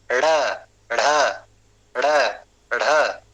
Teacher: उत्क्षिप्त, उत्क्षिप्त क्यों? क्योंकि इनको बोलने में जीभ का उत्क्षेप करना होता है, जीभ को फेंकना पड़ता है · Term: उत्क्षिप्त व्यंजन